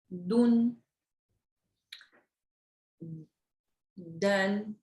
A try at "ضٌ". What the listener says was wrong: No, not done. That's a D. We want take your tongue, press up here. Dun. Dun.